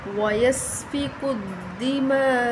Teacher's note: بڑی مد ہے، 5 الف کے برابر لمبا کریں گے